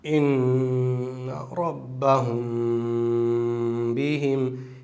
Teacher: یہاں اس میم ساکن کی آواز کو ہمیں چھپانا ہے ناک کے بانسے کے اندر۔ یہاں ناک سے اس کو ادا کریں گے اور گنگناتے ہوئے کریں گے۔ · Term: اخفائے شفوی